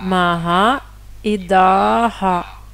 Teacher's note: Si le visarga est à la fin de la phrase, il répète la voyelle. Donc ici, on voit le maha et on voit ici da, il est à la fin de la phrase.